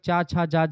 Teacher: च वर्ग के वर्णों के उच्चारण में स्पर्श भी होता है और हवा रगड़ करके संघर्ष करते हुए बाहर निकलती है। इसे स्पर्श संघर्षी व्यंजन कहा जाता है।